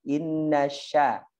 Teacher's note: huruf sya, hati-hati tengah lidahnya yang naik